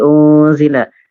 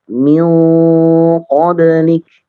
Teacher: Untuk nun yang menghadapi apa namanya huruf-huruf isti'la maka dia agak terangkat ya, agak terangkat. Tidak seperti unzila.